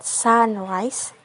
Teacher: The stress is on the first syllable sun.